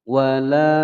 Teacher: Wala panjang 2 ketukan mad tabi'i.